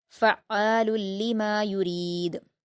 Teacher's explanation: عین مشدد ہے تو سختی کے ساتھ پڑھنا ہے، لیکن آپ کو حلق سے ادا کرتے ہوئے پڑھیں گے آپ عین کے مخرج کو